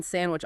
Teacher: And then there's elision, where a sound is dropped altogether, like the D in sandwich often disappears in casual speech